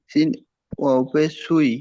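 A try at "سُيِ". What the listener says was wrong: ওয়াও নেই, ইয়া আছে দেখেন, ইয়া। সুই সুই। হ্যাঁ, ইয়াজের ই, সুই ই।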